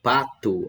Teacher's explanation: Pato, a sílaba tônica é o Pá